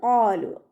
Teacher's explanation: ഖാലു, ഖാലു എന്ന് ഓതരുത്, ഖാലു. നാവിൻ്റെ ബാക്ക് മുകളിലേക്ക് പൊക്കി കൊടുക്കണം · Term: ഖാഫ്